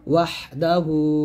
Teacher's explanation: ওয়া হাজবর ওয়াহ, বাতাস বের করবেন